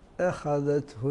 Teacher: نحرص على ترقيق الهمزه المفتوح قبل حرف الخاء